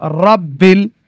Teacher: র এর উপরে জবর আছে তাই রপুর